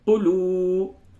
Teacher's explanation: قاف کو جلدی پڑھیں گے لیکن لام کو جلدی نہیں پڑھیں گے، کیونکہ لام کے آگے واو ہے اور یہ واو مدہ ہے